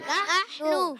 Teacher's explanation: نحنو میں پہلا حرف نون, نون پر زبر ہے. نحنو, نون کو ہا سے ملائیں گے, ہا حلق کے درمیان والے حصے سے